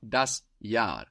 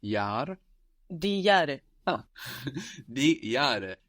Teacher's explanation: For example, the year is das Jahr, that's spelled J-A-H-R, and that H just stretches out that vowel, das Jahr.